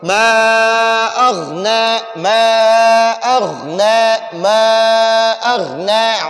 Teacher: یہ غین کو پر پڑھیں گے اور نون کو تھوڑا سا کھینچیں گے، تھوڑا سا اس کو لمبا پڑھیں گے۔ ما اغنا، اس ما پر بھی تھوڑا سا مت کریں گے، تھوڑا سا لمبا پڑھیں گے۔